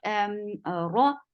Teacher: And the sound is very short. Ra, ra is heavy, and the sound is short.